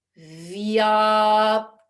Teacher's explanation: There's still the same contact, but it's gentle. It's a gentle touch of the lower lip to the front top teeth. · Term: Sanskrit Va